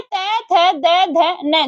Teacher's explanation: कौन से बोले जाएंगे आपके त, थ, द, ध, न, जो ये आते हैं ये दंत से बोले जाते हैं